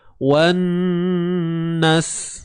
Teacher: wan masuk terus pada bunyi nun yang bersabdu. Dalam masa yang sama kena dengung lah. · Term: Gunnah musyaddadah